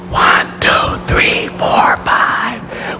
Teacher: When you hear my voice, you don't hear anything but the noise because you don't hear my vocal cords vibrating. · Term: voiceless